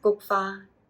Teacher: both high tone there for the Gokfa